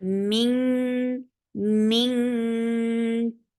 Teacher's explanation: this is ikhfa with kaf, so this sound should be heard like ink. You are going to say ink.